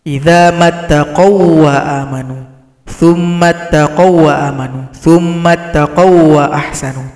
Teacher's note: Maka ini adalah idgham mutamatsilain, pertemuan dua huruf yang sama. Maka waw yang pertama dibaca lebur kepada waw yang kedua sehingga tidak dibaca lagi.